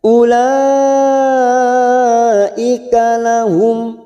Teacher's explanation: mim sukun bertemu hamzah idhar safawi, kita baca jelas tanpa mendengung